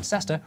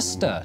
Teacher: locals who were too busy to pronounce all the syllables in sester reduced it to stir